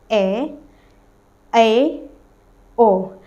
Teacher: पर अगर हम अर्ध विवर्त की बात करते हैं तो सवर इन स्वरों के उच्चारण में मुह आधा खुलता है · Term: अर्ध विवर्त स्वर